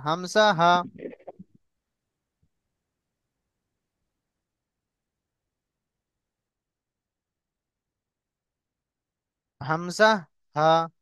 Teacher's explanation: এই গলার একদম নিচের অংশ থেকে, কণ্ঠনালীর শুরু অংশ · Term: 1 নম্বর মাখরাজ